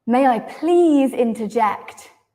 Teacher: if we stress please it sounds like they are not letting you interrupt but you need to interrupt